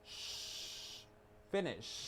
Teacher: A usted le suena como che el verbo en presente, pero es una SH, es sh, finish.